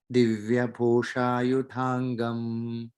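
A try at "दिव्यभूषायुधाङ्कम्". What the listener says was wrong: second line, Yudankam, ka, not ga. Divya Bhusha Yudankam. No, ka, kam, K-A-M.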